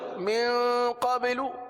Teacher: اچھا قبلو کی آواز آ رہی ہے، قبا نہیں ہے، یہ قلقلہ کیا جا رہا ہے